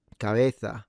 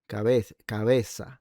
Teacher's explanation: It's th or s rather than ts. But it's too confusing because not every accent in the Spanish language has this adorable lisp.